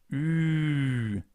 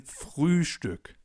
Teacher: We start with the U, the German version of U, U, and then we round our lips even more and place the tongue a little more at the front.